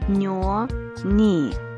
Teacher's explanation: the tongue is wide and flattened the front of the tongue is connected to the upper teeth or alveoli